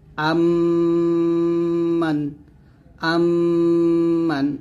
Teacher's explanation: দুই ঠোঁটে মিল করে গুন্নাটা আদায় করতে হবে · হামজা মিম জবর আম মিম নুন জবর মান আম্মান আম্মান এরকম ভাবে দুই ঠোঁট মিল করে গুণার আদায় করতে হবে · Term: মিম সাকিনের ইদগাম গুন্না